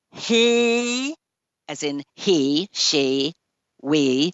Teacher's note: for a long E sound, the tongue is high up in the mouth